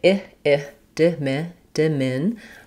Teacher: That means the min syllable is longer and the other syllables are shorter and have reduced vowels. The di beginning as a prefix when it's short does have the same ih vowel as in the stress syllable. It's just going to be shorter. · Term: second syllable stress